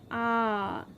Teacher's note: जब हमारा पूरा मुंह खुलता है तो हम उसमें बोल रहे होते हैं आ। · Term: विवृत